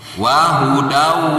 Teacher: Jadi tanwin fathah, suara tanwinnya itu tidak ada, hilang karena masuk ke huruf wawu. Wahudau. Nah, itu kan nggak ada suara tanwinnya atau suara non sukunnya juga nggak ada di sana. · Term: diidghamkan